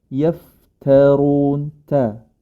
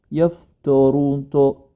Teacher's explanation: huruf ta tetaplah dia menjadi ta istifal ya